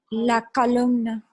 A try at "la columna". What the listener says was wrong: Now, be very careful with your pronunciation there. A lot of people pronounce it as though it had a second A, but it's la columna. So it's not calumna, it's columna.